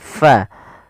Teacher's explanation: alirkan nafas pada lafal fa, ini jangan diganti dengan pa. Nah, ini salah, tapi dia fa.